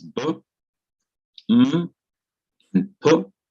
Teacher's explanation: Mem already has the sound of the lip, Mem, and Pe. In all of these B, M, and P, you feel the lips together and then they are released. These are labial letters, letters pronounced with both lips pressed together and released or opened up.